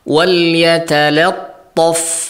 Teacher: karena lam bersebelahan dengan huruf tebal setelahnya yaitu ta, maka lam juga tidak serta-merta ditebalkan. Tetap harus ditipiskan.